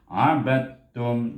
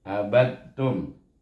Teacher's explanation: idgham mutajanisain, di mana huruf dal dan huruf ta mempunyai makhraj yang sama